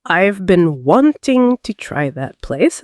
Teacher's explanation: In the sentence, I've been wanting to try that place, the stressed words are been, wanting, try, place. Everything else flows quickly between these stress points.